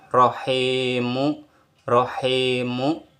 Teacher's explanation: huruf yang bertanda kasrh bertemu atau diikuti oleh huruf Ya Sukun maka huruf tersebut dibaca panjang dua harakat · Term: mad asli